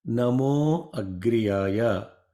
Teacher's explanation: The visarga becomes O sound when it is followed by, for example, a. Namaha plus Agriyaya, Namo Agriyaya.